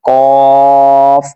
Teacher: یہ جو قاف ہے 2 نقطوں والا، یہ ادا ہوگا زبان کی جڑ اور تعلق کے نرم حصے سے ادا ہوگا · ٹھیک ہے، قاف جو 2 نقطوں والا ہے ان کو ادا کرنے کا طریقہ یہ ہے کہ آپ دیکھ سکتے ہیں اس کے سامنے طریقہ لکھا ہوا ہے، یعنی مخارج لکھا ہوا، کہاں سے ادا کرنا ہے۔ زبان کی جڑ اور تعلق کے نرم حصے سے ادا ہوتا ہے، یعنی زبان کی جو جڑ ہے وہاں سے اور تعلق کے نرم حصے سے ادا ہوتا ہے۔